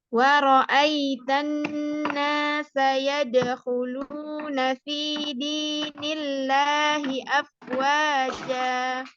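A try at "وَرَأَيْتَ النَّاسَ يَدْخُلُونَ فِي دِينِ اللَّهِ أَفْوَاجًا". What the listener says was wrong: Tapi mohon maaf ketika membaca huruf fa-nya kedengarannya agak kurang pas makhrajnya ya Ibu ya. Huruf fa itu kurang lebih seperti huruf F ya. Dari ujung gigi seri atas kita, mohon maaf ya.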